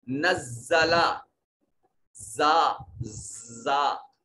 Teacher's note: نزلہ زا زا، جب را کے بعد والا زا ہو تو اس کو دونوں سامنے والے ثنایا علیہ اور ثنایا سفلا آپس میں ملا کر اور اس پر ہوا کا دباؤ اور پریشر دیا جاتا ہے، اور پڑھتے وقت منہ سے سختی اور سیٹی کی آواز آتی ہے۔ اس حرف کو حروف صفیریہ میں سے کہا جاتا ہے، یعنی ایسے حروف جن کی ادائیگی کے وقت زبان سے سیٹی کی آواز آئے۔